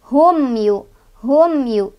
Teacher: Cara bacanya mim sukunnya dibaca jelas, enggak boleh mantul, enggak boleh ditahan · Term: izhar syafawi